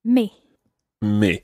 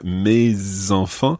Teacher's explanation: it's called liaison so the s of me follows on and you pronounce it